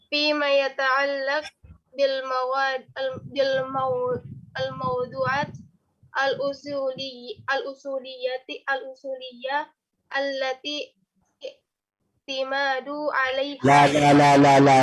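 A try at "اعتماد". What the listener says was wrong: I'timadu ada alif. Ini kan nggak ada alif ini.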